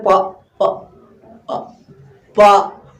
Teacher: हमारा ओठ जब तक बंद नहीं होता तक हमारा प पढ़ ही नहीं सकते